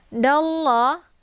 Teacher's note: Ha ini sifatnya hamas, jadi ada desis angin yang agak samar-samar. Ha ini adalah ha besar atau posisinya yaitu di tenggorokan bagian bawah. · Jadi lafdzul jalalahnya dibaca tebal. La-nya dibaca panjang karena ada harakat fathah berdiri tegak. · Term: lafdzul jalalah tafkhim